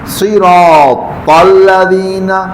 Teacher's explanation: صراط الذین, یہ ذال, ذال جو ہے زبان کی نوک کو باہر نکالنا ہے اور سامنے والے دو دانتوں کے جو سرا ہے وہاں لگانا ہے